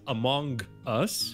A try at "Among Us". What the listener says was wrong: No, Among Us. It's a schwa. It's not an O. I know it's spelled with an O, but you know how among English is. It's not Among. It's Among. Among.